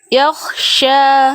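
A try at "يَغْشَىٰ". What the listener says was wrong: Nah, itu kho. Harusnya bukan yakhsha tapi yaghsha. Bunyi ghainnya nggak pakai nafas. Itulah ghain. Kalau pakai nafas jadilah kho dia.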